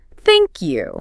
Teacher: specifically using a falling tone on thank you with a little downward slide at the end. Thank you. Ah yes, that falling thank you sounds much more final and well standard polite English than a rising thank you which might sound like a question or unfinished. · using a falling tone on thank you, a little downward slide at the end